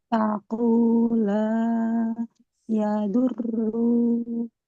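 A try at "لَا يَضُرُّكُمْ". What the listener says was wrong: Qiraatnya nggak boleh panjang. La yadurrukum. Roknya dhammah. Di depannya kan tidak ada wawunya ya. Maka nggak boleh kita panjangkan. La yadurrukum.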